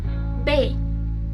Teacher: Saat mengucapkannya, kedua bibir kita akan menutup terlebih dahulu sebelum bunyi keluar. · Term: bunyi konsonan